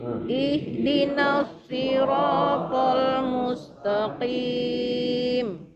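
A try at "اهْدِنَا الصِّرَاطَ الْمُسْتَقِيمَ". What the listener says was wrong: Huruf qaf jangan terlalu tebal. Dia huruf tebal, tetapi ketika kasrah dia sedikit menipis ketebalannya. Mustaqim, lembut saja. Mustaqim. Jangan terlalu tipis jadi kaf tapi ya. Mustaqim itu juga salah.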